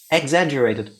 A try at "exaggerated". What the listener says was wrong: He still says it with a U.